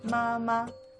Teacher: Made of the sounds M and A, in the first tone.